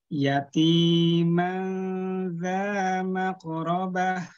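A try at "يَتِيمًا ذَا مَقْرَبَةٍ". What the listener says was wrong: Koknya tebelin. Yatiman dza maqrabah. Maqrabah. Hati-hati di tebalan koknya ya.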